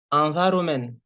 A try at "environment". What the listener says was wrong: No, the EN is N. Good, but you didn't pronounce my T at the end. Environment.